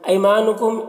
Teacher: یا یہاں پر یا لین ہے، اسے جلد پڑھیں گے۔